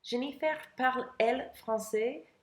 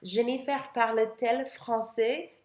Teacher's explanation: You need that consonant, that T sound in between the verb and the subject in the inverted form to make it sound right.